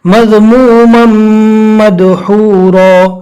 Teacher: total 4 حروف ہے، یا واو میم نون، لہٰذا یہاں پر ادغام باگنہ یعنی ملا کر گنہ کے ساتھ پڑھنا ہے